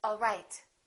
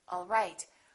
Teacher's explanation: One is falling intonation and one is rising intonation.